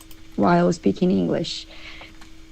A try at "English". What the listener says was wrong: Also in English, I do I instead of E. You kind of did in English. English.